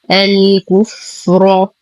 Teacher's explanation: نفخم الراء لأنها مفتوحة